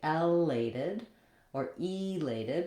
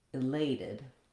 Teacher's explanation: So now my stress falls on the second syllable, lay, and my letter A says the clear A sound. So here, A said but here A is in the stress syllable, so it gets the clear vowel.